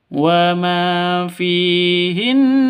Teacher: nun tasydid gunah musyaddadah dengung ya